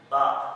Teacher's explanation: मेरे दोनों जो होंठ हैं आपस में मिलते हैं बा, तो इसमें होठों की पीछे वाली जो तरी है वो दोनों आपस में मिलानी है बा।